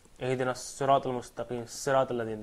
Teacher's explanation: By the way, saw is an emphatic sound.